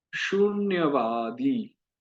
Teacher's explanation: जैसे यहाँ शून्यवादी में उकार बड़ा है तो थोड़ा समय दीजिए। शून्यवादी, आ बड़ा है, ई बड़ा है, तो थोड़ा समय दीजिए